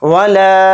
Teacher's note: لام الف زبر لا کو 3 الف کی مقدار کھینچیں گے۔ ولا، اس طرح سے۔ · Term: مد منفصل